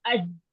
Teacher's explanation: यानी कि अगर हम खाली जीम का मखरज कलकला को अगर हम इग्नोर कर दें, कलकला ना करें, तो खाली इसका जीम का मखरज चेक करें तो अज, अज की जुबान का जो मिडल हिस्सा है वो ऊपर तालू पे जब लगता है ना, तो वहां पे लगने से आवाज एकदम बंद हो जाती है। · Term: शिद्दा